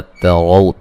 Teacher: अलम हमज़ा को तहक़ीक़ से पढ़ेंगे, मीम साकिन का इज़हार है, तरौ ता को बारीक और रा को मोटा अदा करना है